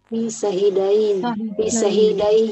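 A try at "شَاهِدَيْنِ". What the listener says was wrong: Jangan dibaca syahidi ini, Bu ya. Karena kalau dibaca syahidi ini nanti saya artinya syahidi. Tapi kalau dibaca syahidai ini berarti diambil dari syahidaini.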